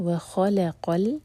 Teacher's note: خا ہیوی، لام لائٹ، قاف ہیوی. آگے قاف کو ہم لام سے جوڑیں گے، وَخَلَقَ.